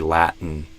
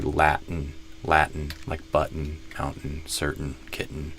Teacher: So it's a T in the throat, a glottal T. It's not wrong to say Latin, but I just tend to do Latin, like button, mountain, certain, kitten, etc.